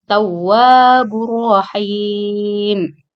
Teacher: tawwabur rahim, idgham bila hunna. Tanwin ketemu ra.